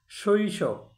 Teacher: স তালবস্যের সাথে ওকার যোগ হয়নি, এখানে তালবস্যটা হলন্ত উচ্চারণ হয়েছে